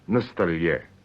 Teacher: When you say на столе, on the table, you stress the last syllable, that is the ye.